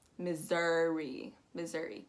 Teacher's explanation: what you want to make sure is that ss turns into a z and that u o u turns into an uh